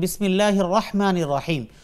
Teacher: রহ এটা উপরে জবর, এটা উচ্চারণ করতে আমরা পুর অর্থাৎ একটু মোটা করে বলি